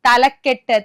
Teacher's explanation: രണ്ടാമത്തെ പദത്തിന്റെ തുടക്കത്തിലുള്ള ദൃഢ വ്യഞ്ജനം ഇരട്ടിച്ചു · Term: ഇരട്ടിപ്പ്